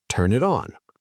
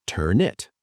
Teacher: The N from turn moves to it. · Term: Consonant to vowel linking